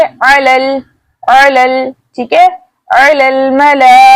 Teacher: हमज़तुल वसल दरमियानी कलाम में आने की वजह से हज़फ हो गया।